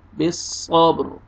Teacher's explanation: یہاں پہ صاد کو موٹا کر کے اور را کو پر کرنا ہے